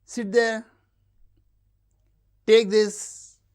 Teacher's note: Commands and requests with low rise.